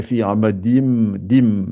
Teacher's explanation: Donc, je ne fais pas le noun qui est là, le tanwin. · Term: idgham